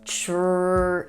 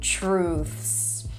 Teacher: to pronounce truths, you start with a ch sound, then an R, tr, long oo as in food, true, and then THS together. Truths. I wanted to add that because I knew you were probably thinking, oh, truths, how do you say that?